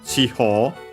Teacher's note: the E of chi should be barely heard if at all · accented on the ho, so be careful, an unusual spot for the accent